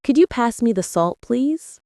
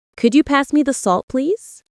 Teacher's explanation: the way my voice rises on could you and falls gently at the end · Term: intonation